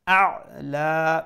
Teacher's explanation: রা full mouth ba the shadda double letter double sound a'la make sure you pronounce the ain from the middle of the throat and at the end we'll stretch it to one end long